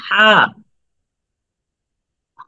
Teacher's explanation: দেখুন যে এই জায়গাটা থেকে আওয়াজটা বের হয় কিনা। হা, গলার মাঝখান থেকে হা।